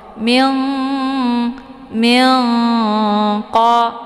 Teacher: Nun letaknya di ujung lidah sementara qaf letaknya di Pangkal lidah cara bacanya nunnya disamarkan kemudian siap-siap masuk huruf qf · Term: Ikhfa ab'ad